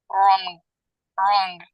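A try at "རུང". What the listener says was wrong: Yeah, good.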